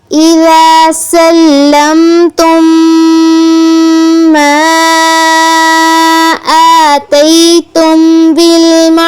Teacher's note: اخفا کریں گے. بالمعروف را پر ہم نے تفخیم کرنی ہے